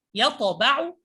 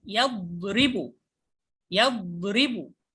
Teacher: يطبع حرف مقطوع، يطأ، يطأ، يطأ. أما الضاد فحرف رخو